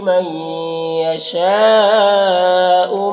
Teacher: मई यहाँ पर नून साकिन के बाद या है, हुरूफ यूमिन में से तो नून को या से मिलाकर गुन्ना के साथ में पढ़ेंगे, इसको इदगाम में नाकिस कहते हैं।